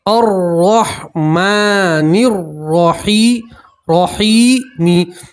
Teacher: نرحیمی حیمی، اب دیکھیں یہاں بھی را مشدد کے اوپر زبر ہے اور یہاں بھی را مشدد کے اوپر زبر ہے تو دونوں را کو آپ پور پڑھیں گے، موٹا پڑھیں گے